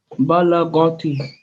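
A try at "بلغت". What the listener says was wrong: Not ga, balagati.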